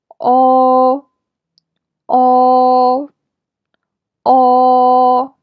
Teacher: your lips are round when you pronounce it. Your tongue is pulled back and raised up.